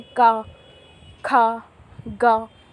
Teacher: जब हम ये व्यंजन बोलते हैं तो इसमें पहले से ही जो आ की ध्वनि, आ की आवाज़ है, वो मिली होती है, क्योंकि व्यंजन जो है वो स्वरों की मदद से ही बोले जाते हैं।